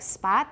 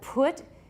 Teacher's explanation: So like spot, the P is voiceless, but put, it's voiceless and aspirated.